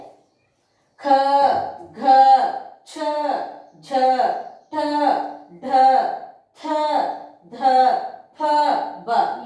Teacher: ಹೆಚ್ಚು ಉಸಿರಿನಿಂದ ಉಚ್ಚರಿಸುವ ಅಕ್ಷರಗಳಿಗೆ ಮಹಾಪ್ರಾಣ ಅಕ್ಷರಗಳೆಂದು ನಾವು ಕರೆಯುತ್ತೇವೆ